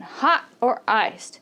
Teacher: When you have two options in English, in a question, do you want hot or iced? The intonation is going up on the first option and then down on the second option.